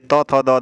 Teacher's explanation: ये त, थ, द, ध वाला ये दंत ध्वनियाँ हैं।